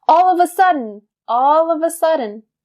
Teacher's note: I would probably stress the word sudden